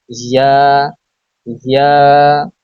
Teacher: জিহ্বার মধ্যখান তার বরাবর উপরে তালুর সঙ্গে লাগিয়ে উচ্চারিত হয় ইয়া